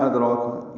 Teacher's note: ادراک دال ساکن پہ قلقلہ ہے، را پر ہے، کھڑا زبر ہے، 2 حرکات لمبا کریں گے